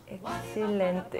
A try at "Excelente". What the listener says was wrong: we don't pronounce the X.